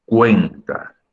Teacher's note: en cuenta también la sílaba tónica es cue, también es grave.